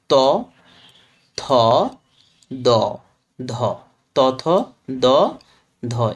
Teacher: উপরের পাটি দাঁতে লেগে বায়ুপথে বাধা সৃষ্টি করে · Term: দন্ত ব্যঞ্জন